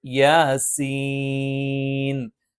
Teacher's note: മദ് ലാസിമാണ് സീൻ ഇവിടെ ഉച്ചരിക്കേണ്ടത് യാസീൻ മറിച്ച് യാസീൻ എന്ന് ഉച്ചരിക്കാൻ പാടില്ല യാ എന്ന് സാധാരണ ദൈർഘ്യത്തിൽ നീട്ടിയാൽ മതി സീൻ എന്നുള്ളത് കുറച്ചധികം നീട്ടണം